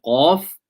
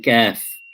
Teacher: So if you take a look at the diagrams, for example, on this one with the qaf, it's slightly further back. With the kaf, it's slightly forward.